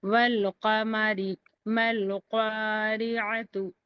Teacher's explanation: لام کو ظاہر کر کے پڑھنا ہے اور الف کو چھوڑ دینا ہے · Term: اظہار قمری